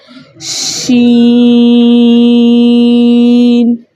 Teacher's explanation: شین بھی بڑی مد کے ساتھ موجود ہے، اس لیے ہم اس کو بھی 5 حرکت کی مقدار کھینچ کر پڑھیں گے